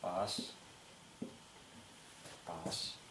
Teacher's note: теперь разберём произношение согласных букв буква б в тувинском языке в начале слова она произносится Глухо как русское п